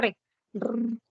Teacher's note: con el sonido de la r r la r y tienes la vibrante múltiple cuando la lengua le da varios toques Cuando haces el sonido de r Esa es la vibrante múltiple